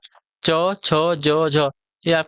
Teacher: च, छ, ज, झके तालव्य होते हैं।